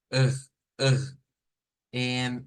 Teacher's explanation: Es una R que procede de nuestra garganta, se dice, y no tanto con la lengua. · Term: R francesa